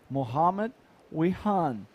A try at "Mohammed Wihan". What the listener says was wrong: Actually, it's Viam because I learned that the W is pronounced as a V.